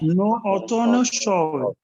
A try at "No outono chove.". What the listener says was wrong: Isso aí, muito bem.